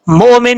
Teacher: واؤ کی آواز نہیں آئے گی، حمزہ کی آواز آئے گی، لیکن حمزہ ساکن ہے، جھٹکے کے ساتھ پڑھا جائے گا۔ مومن، وقف کریں گے تو نون ساکن ہو جائے گا، ملا کے پڑھیں گے تو نون کے اوپر دو پیش ہیں، آگے واؤ ہے، یہ بات بھی سمجھنے والی ہے۔